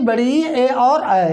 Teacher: इन स्वरों के उच्चारण में हमारे दोनों ओठ गोलाकार या वृत्ताकार नहीं बन रहा है या नहीं हो रहा है, इसीलिए इन्हें वृत्तमुखी स्वर कहते हैं। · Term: आवृत्तमुखी स्वर